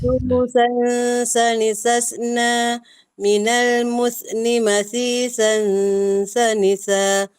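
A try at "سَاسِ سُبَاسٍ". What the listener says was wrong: Cuba ringankan lagi sentuhan pada gigi tu. Cuba jaga. Jangan tekan kuat. Dia macam dia berat bunyi dia macam paksa.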